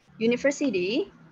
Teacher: Tapi ketika diucapkan, U itu tidak terdengar seperti vowel, melainkan terdengar seperti U. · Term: consonant sound